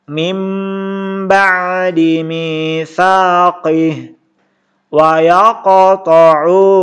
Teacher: Ini artinya iqlab ya. Didengungkan nun ketemu bah.